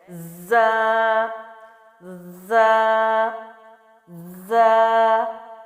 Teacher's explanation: زا سیٹی اور سختی کے ساتھ ہے، جو ہم پڑھ چکے ہیں سیٹی والے حروف میں سے۔ اس کے لیے زبان تو آپ کی اسی طرح لگے گی، لیکن آگے دانتوں کی شیپ، ہونٹوں کی شیپ اس طرح سے ہوگی، کیونکہ اس کے لیے سیٹی چاہیے، اور وہ ہے زا زا زا۔